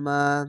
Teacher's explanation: জাবারের পরে খালি আলিফ, এক আলিফ টেনে পড়বেন